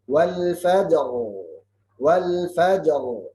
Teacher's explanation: Harus baca jim sukun dan qalqalah, kemudian ra tafkhim sukun.